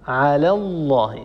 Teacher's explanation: هذا لامه بعدها على الله بعدها اللام المشدده من لفظ الجلاله وهي لام مغلظه لام مفخمه لان لفظ الجلاله سبق بفتحه اللام وبالتالي فان لامه متفخم والفه تفخم تبعا لللام الذي قبله